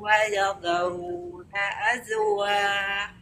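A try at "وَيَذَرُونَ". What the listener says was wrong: Bacanya wayadha ya, bukan wayadho, bukan lo tapi dha. Waya. Dha biasa, dha. Coba dha biasa, dha. Dha. Wayadharu. Iya, yang tebal ro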